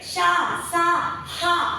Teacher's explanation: అంటే ఈ అక్షరాలు పలికేటప్పుడు మనం ష అంటే గాలు ఊది పలుకుతాం అన్నమాట ఇలా గాలు ఊదుతూ పలికే అక్షరాలను మనం ఊష్మాలు అంటామండి